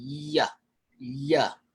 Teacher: the middle of your tongue is pushing up almost right in the middle of where you'd say your palate is